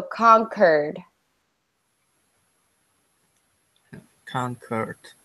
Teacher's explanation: we don't want to do the normal q you like quite quit we want to actually say it like a hard C